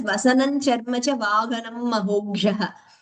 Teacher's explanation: The Ha's were heard slightly like Ga, more towards Ga actually.